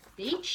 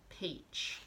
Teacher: B and P are basically the same sound. One has a voice on and one has a voice off.